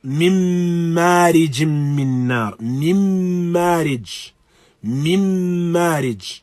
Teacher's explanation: With mim and noon itself, we have idghamun bi gunna kamil. So we have a complete assimilation of the noon into either the mim or the noon. We still have the presence of gunna, but this assimilation is kamil.